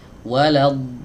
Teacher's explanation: Nah, ini panjangnya adalah 6 harokat karena ini merupakan mad yang harus dibaca panjang, namanya mad lazim kalimi mutsaqqal, panjangnya 6 harokat ya, jadi panjang banget ya, 6 harokat